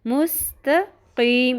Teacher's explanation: تا کو باریک رکھتے ہوئے قوف کو پر کرنا ہے, ورنہ تا بھی تو بن جائے گا.